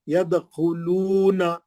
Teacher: دال پہ خلخلہ کریں گے